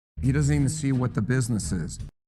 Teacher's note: he has a stress on the word see and also the word business.